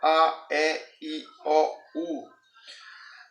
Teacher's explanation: quando chega no I e no U, você vai perceber que a sua boca ela já está quase que completamente fechada. Ou seja, essa passagem anteriormente falada, que era uma passagem livre, essa passagem ela foi diminuindo.